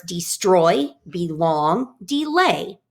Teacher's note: The iam is a pattern that goes unstressed, then stressed, like in the words destroy, belong, delay.